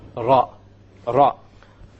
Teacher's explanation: The gums meaning the area behind the teeth. So you use the tip of the tongue and you place it close to the gums of the upper teeth